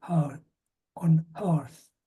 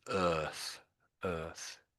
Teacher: A very slight half a H you're putting in there, aren't you?